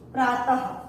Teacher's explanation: ये विसर्ग का चिन्ह है, माने दो बिंदु होते हैं, इसको विसर्ग बोलते हैं। जब विसर्ग का उच्चारण किया जाता है, जैसे आधा हा का प्रोनाउंसिएशन होता है